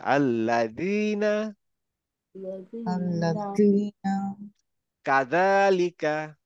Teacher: দায়ের মতো উচ্চারণ হবে, কিন্তু জিভটা একটু বের করে আনতে হবে